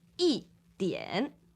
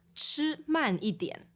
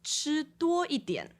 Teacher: if the word after i is third tone, then i would have a tone change to fourth tone